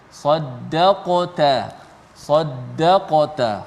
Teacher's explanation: sa tebal, dal nipis, qaf tebal, ta nipis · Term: tebal dan nipis